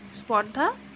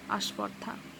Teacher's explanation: এই যুক্ত ব্যঞ্জনটাকে কি করা হচ্ছে, যুক্ত ব্যঞ্জনের আগে আমি একটা আ যুক্ত করা হচ্ছে। দেখো স্পর্ধা বলতে যতটা না কষ্ট হচ্ছে তার থেকে বেশি আরাম হচ্ছে আস্পর্ধা বললে। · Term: আদি স্বরাগম